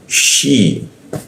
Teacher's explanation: Tengah lidah dia, sama seperti ya di tengah lidah, sya di tengah lidah. Shi. Nah, syiqa, nah masuk ke qa di mana?